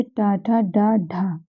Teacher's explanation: तो ट, ठ, ड और ढ, ये चारों भी हमारे मूर्धा से उच्चारित होते हैं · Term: मूर्धन्य